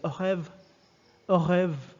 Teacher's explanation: Notice that the R is guttural, it's different. It's not au revoir. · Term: French R